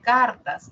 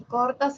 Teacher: La diferencia La a y la o en cartas la a la a es central baja y en cor la o es media posterior central y posterior La respuesta es central y posteri porque dice